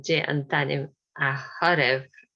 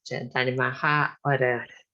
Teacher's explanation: the two vowels together, we sometimes miss out one of them. So this th is actually ha.